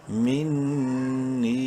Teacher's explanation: مد کی وجہ سے نون کو 3 الف کے برابر لمبا کر سکتے ہیں